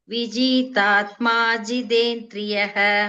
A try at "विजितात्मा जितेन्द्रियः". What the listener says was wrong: विजितात्मा. No dirgha. Not viji. Vijitatma. Both the tas are dirgha there. Vijitatma jitendriyah. Not viji. Vijitatma.